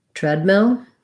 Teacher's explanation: So treadmill has first syllable stress. The EA in tread has the F vowel.